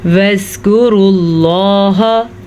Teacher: زال کو نرمی سے پڑھیں، کاف کو بھی نرمی سے پڑھیں کیونکہ یہ باریک کاف ہے